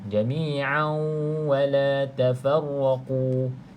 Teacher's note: Jami jadi masuk dalam wau bersama dengan ghunnah bersama dengan dengung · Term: idgham maal ghunnah